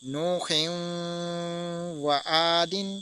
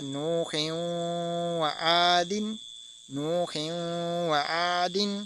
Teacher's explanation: اسی طرح اگلا حرف دیکھتے ہیں، جیسے ہے نوح و عاد، اب ہا ہے، اس کے نیچے دو زیر ہے، ہم نے دو زیر کو نہیں پڑھا بلکہ واو کے ساتھ ملا کر پڑھا ہے